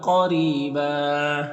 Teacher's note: क़ाफ हुरूफ़ मुस्तालिया में से पुर पढ़ेंगे, रॉ के नीचे ज़ेर, रॉ को बारीक पढ़ेंगे और यहाँ पर या मद्दा है। दो ज़बर है तो एक ज़बर के साथ अलिफ पढ़ेंगे